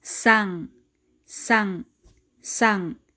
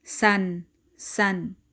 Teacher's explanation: If N is at the end of the word, it takes the sound of ng, as in sang, sang, sang, instead of san, san.